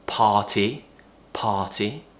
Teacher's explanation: we're not pronouncing the R